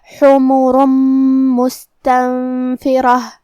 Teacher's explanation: کلمت حمرن میں ہا کو ہم حلق کے درمیان والے حصے سے پڑھیں گے. ہا پہ اور میم پہ پیش ہے، تو ہم یہ دونوں پیش کو برابر سے ادا کریں گے. · کلمت مستنفرہ میم حروف الادغام بغنہ میں سے ہے، اور ادغام کا معنی ہے حرف کو حرف میں داخل کرنا، تو ہم یہ تنوین کو میم میں ملا کے غنہ اور تشدید کے ساتھ یہ حکم کو ادا کریں گے · یہاں سین ساکن ہے، لہذا ہمیں سین کو ہمزے سے پڑھنا ہے. ہمزے کا معنی ہے کہ حرف کی آواز ایسے کمزور ہو کہ اس میں پستی پائی جائے